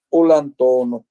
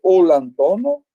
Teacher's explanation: é como se fosse uma palavra só, porque uma termina em L e a outra começa com vogal. Aí, na prática pronuncial, fica olantono.